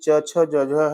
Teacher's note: ये आपका तालव्य है, जिसको स्पर्श संघर्षी भी कहते हैं